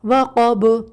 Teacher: حروف قلقلہ ہے اور آواز ساکن ہونے کی صورت میں پلٹ کر آئے گی، وقب۔ ٹھیک ہے، وَمِن شَرِّ غَاسِقٍ إِذَا وَقَبَ۔